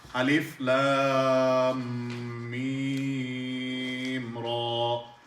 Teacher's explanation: So lam 3 alif long, mim 3 alif long, ra 1 alif long.